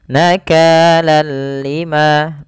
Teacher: Idghamnya adalah kita memasukkan tanwin ke huruf lam, seraya kita hilangkan suara nunnya dan kita ganti dengan huruf lam. Awalnya nakalan ketemu lam, ganti dengan lam, nakalal lima, tapi tidak disertai dengan gunnah, tidak ditahan seperti ini. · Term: idgham bila gunnah